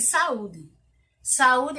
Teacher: a sílaba tônica de saúde é o U, e ela é paroxítona. Então, se ela é paroxítona, ela tem como sílaba tônica a penúltima, não é isso?